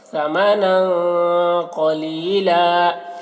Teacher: تنوین کی آواز کو ناک میں چھپا کر پڑھیں گے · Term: اخفا